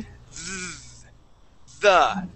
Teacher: now this is going to be a voiced TH, the, it has a slight vibration